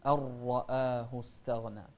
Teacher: الراء هني إذا كانت مفتوحة فهي مفخمة